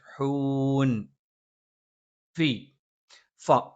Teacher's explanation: മേലെ മുൻപല്ലിന്റെ താഴ്ഭാഗം താഴെ ചുണ്ടിന്റെ പള്ളയിലാണ്